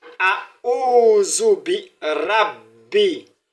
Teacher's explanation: Il faudrait qu'on ait l'impression que le B a été doublé au cours de la lecture.